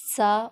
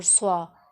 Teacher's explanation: جو باریک ہوتا ہے وہ سا اور جو موٹا ہوتا ہے وہ سوا